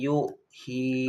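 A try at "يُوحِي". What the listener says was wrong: Nah yu-nya matemi. Yuhi. Dua-duanya panjang matemi. Dari yu aja. Yuhi biar cepat.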